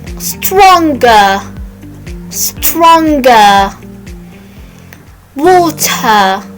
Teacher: don't say the r at the end of the word